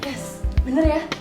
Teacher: Pada video tersebut terdapat perubahan fonem A menjadi E.